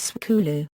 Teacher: An example from Chua, the word school, borrowed from English, and then transformed to fit the sound patterns of this language, is skulu. That is, sk has been broken up by inserting an epenthetic u. U has also been added at the end of the word.